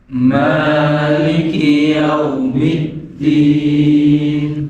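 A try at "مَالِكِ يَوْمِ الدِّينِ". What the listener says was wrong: Middin itu pakai huruf dal. Lah huruf dal itu dia mempunyai sifat jahar. Ininya getar. Nah ada jangan dibaca tak. Mereka makhrajnya sama, cuma sifatnya beda. Kadang orang bacanya pakai tak begini. Maliki yaumid. Itu tak. Maliki yaumid. Itu tak.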